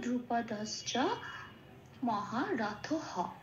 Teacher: আর মহারথ যেমন আছে তেমন থাকবে, কিন্তু যেহেতু বিসর্গ আছে এই অক্ষরটার শেষে, সেই জন্য যখনই সংস্কৃতে অক্ষরের শেষে বিসর্গ থাকে, শেষে যদি বিসর্গ থাকে ওটা পূর্ণ হ হিসেবে উচ্চারণ হয়, মানে একটা হ যুক্ত হবে এবং সেই হটাকে উচ্চারণ করব আমরা মহারথ হ বলে। যেহেতু হটাকে হ বলে উচ্চারণ করছি সেই জন্য এটাকে পূর্ণ হ বলে।